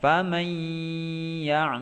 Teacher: Idgham Bighunnah itu harus ditahan dua harokat bukan hanya dileburkan nya saja